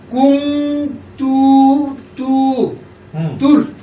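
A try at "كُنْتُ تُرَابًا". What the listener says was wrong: এই যে তুর কেন বলতেছো? তা তো রকে ধরেন, এখানে কি তোমার ইয়ে আছে, সাকিন আছে? এখানে তো কোনো সাকিন নাই। কুনতু তুরাবান, আবার বলো।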